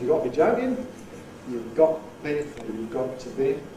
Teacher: This is post-glottal schwa deletion. Cockney seems to have a rule allowing you to delete schwa after a glottal stop before a consonant. So providing T has its glottal stop realization, not otherwise, and providing there's a consonant following, so you've got to be joking, becomes you've got to be joking, you've got to be. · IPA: ˈgɒʔ